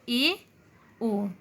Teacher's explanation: अर्धसमवृत, जिसमें मुख्य द्वार समवृत की अपेक्षा थोड़ा सा खुलता है, थोड़ा बड़ा सा खुलता है